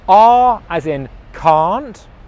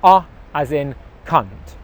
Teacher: 'Can't' as in 'no you can't' it's the /a:/ sound it's a long vowel sound /a:/ Compared to that is the /ʌ/ sound /ʌ/ which is a short English vowel sound